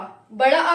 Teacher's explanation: बड़ा आ जब आप बोलते हैं तो आपका जो मुंह है वो पूरा खुल जाता है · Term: विव्रत